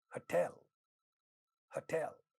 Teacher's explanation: The second syllable in this word is stressed